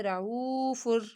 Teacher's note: او کو لمبا کیا، واو ساکن سے پہلے پیش ہے ، رعوف، فر کے اوپر غنہ نہیں ہوگا کیونکہ یہ را